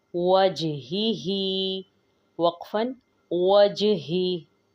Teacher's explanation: जीम पर क़लक़ला किया जाएगा क्योंकि जीम साकिन है